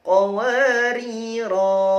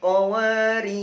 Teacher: Kalau waqaf di qawariro yang pertama, ronya dibaca panjang. Qawariro. Kalau waqaf di qawariro yang kedua, ronya disukun.